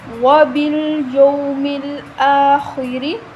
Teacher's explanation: خوا کو موٹا پڑھیں گے، را کے نیچے زیر ہے تو باریک پڑھا جائے گا